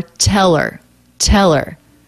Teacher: we have a dropped h the er the schwa r ending just links on to the word before